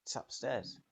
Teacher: In it's upstairs, it's can be shortened to a tss sound.